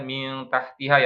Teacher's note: samar dalam artian lidahnya itu persiapan ke makhraj setelah huruf nun atau tanwin ya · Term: ikhfa